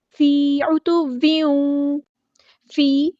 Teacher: یا مد آ گئی ہے تو مد اصلی کریں گے، ایک الف کے برابر لمبا کریں گے۔